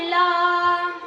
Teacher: লামের মাখরাজ জিহবার অগ্রভাগ দুই পাশে দুই কিনারায় সামনে উপরে দাঁতের মাড়ির সাথে লাগিয়ে বলতে হবে লাম।